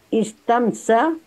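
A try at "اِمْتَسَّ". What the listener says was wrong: Bukan alif ta, bukan alif sinta, tapi alif ta.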